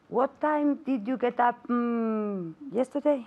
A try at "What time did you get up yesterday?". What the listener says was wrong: Okay, now you're asking me a question, right? So I want intonation.